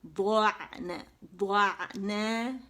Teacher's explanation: عین کا مخرج ادا کرتے ہیں تو وہ پیچھے چلا جاتا ہے، بالکل جو بیک بون کی وال ہوتی ہے اس کے ساتھ لگ جاتا ہے، اور عین کا مخرج بہت اچھے سے ادا ہو جاتا ہے، ٹھیک ہے.